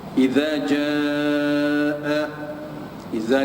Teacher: idza ni mad asli, alif waw ya, 2 harakat